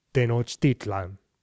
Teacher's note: there's this relentless second-to-last syllable stress